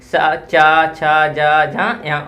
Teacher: इन सबका उच्चारण स्थान क्या होगा? तालु होगा। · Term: तालव्य